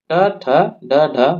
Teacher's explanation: इनका उच्चारण जो है जिभ्या को ऊपर मोड़कर मूर्धा से किया जाता है। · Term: मूर्धन्य वर्ण